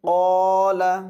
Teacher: قالہ کے ساتھ جو الف ہے اس کو پر پڑھیں گے کیونکہ الف سے پہلے پر والا حرف آ گیا ہے نا، تو اس کو پر پڑھیں گے، جیسے قال، قالا نہیں